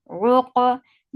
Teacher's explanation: Qaf will get sifa of qalqala, and qaf is heavy. Ruq. Da.